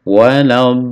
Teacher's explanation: Do dipanjangkan sampai sampai 6 harokat ya. Bo setelah 6 disambungkan ke lam tasdid.